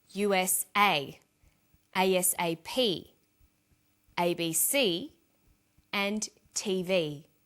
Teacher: that each letter in the abbrev iation is pronounced separately but the last letter is pronounced more strongly because it carries the primary stress